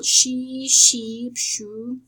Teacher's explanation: The first sound of the postalveolar laterals is sh. This is called the voiceless postalveolar fricative